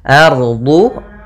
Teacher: rnya tebal yaitu ro tafkhim karena dia ada huruf ro sukun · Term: ra tafkhim